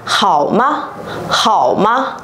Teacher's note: từ khổ này chúng ta cũng chỉ đọc bằng 1/2 thanh 3 thôi